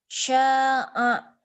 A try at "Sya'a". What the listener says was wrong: Sya'a. Nggak ada yang panjang. Sya'a. Sya'a ya. Jangan sya'a. Sya'a.